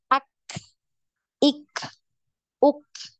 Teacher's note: Jadi tidak boleh ada suara yang ada itu hanya nafasnya saja